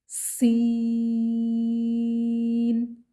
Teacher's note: سین کے اوپر مد ہے، اس کو ہم 6 حرکات کھینچ کر پڑھیں گے اور سین میں سیٹی پائی جائے گی